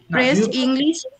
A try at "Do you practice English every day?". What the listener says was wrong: প্রেস না বলো do you practice English everyday